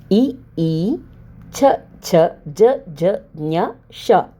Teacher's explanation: ಇವು ದವಡೆಯ ಸಹಾಯದಿಂದ ಹುಟ್ಟುವುದರಿಂದ ಇವುಗಳನ್ನು ತಾಲವ್ಯ ಗಳೆಂದು ಕರೆಯುತ್ತಾರೆ